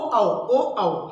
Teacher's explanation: यानी ओष्ठ और कंठ की मदद से ओ और औ को हम बोल पाते हैं